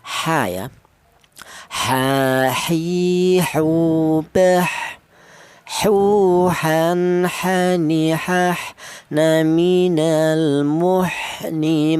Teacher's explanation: huruf ha ini kelonnya huruf berasal dari ha yaitu tenggorokan bagian tengah